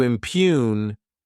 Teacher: Next is the verb impugn. To impugn, this word has two syllables, and the stress is on that second syllable